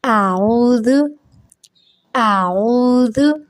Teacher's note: اعوذ اعوذ، یہاں پہ ایک تو حمزہ کی آواز آ رہی ہے، الف جس کے اوپر زبر ہے، الف خالی ہوتا ہے، اگر اس پہ کوئی بھی حرکت لگ جائے تو ہم اسے حمزہ پڑھتے ہیں، تو حمزہ کی آواز سادہ آواز نکلے گی ہماری آ، اور پھر عین ہے، عین حلق سے ادا ہوتا ہے، حلق کے درمیان والے حصے سے، تو اس کو ہم حلق سے ادا کریں گے۔